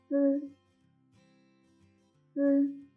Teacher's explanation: the tip of the tongue is close to the back of the upper incisors, leaving a narrow gap, and the airflow squeezes out from the narrow slit of the tongue, and the sound is formed by friction.